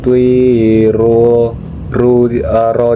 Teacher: ro di sana dibaca secara tafkim yang karena ro di sana berbaris dhammah dan dibaca tebal